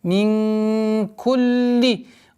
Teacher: Мин, ихфа, в размере двух огласовок, назализации, мягкой назализации. Мин кулли, удвоение лям, после которой кесра